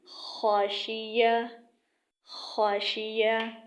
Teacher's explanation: اب خ کی آواز بھی ادنیٰ حلق سے نکلتی ہے